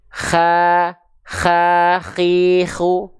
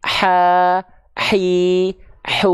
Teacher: Kho juga soalnya punya sifat hams, mengalir nafas. Tapi karakteristiknya seperti mendengkur, seperti ngorok. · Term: huruf kho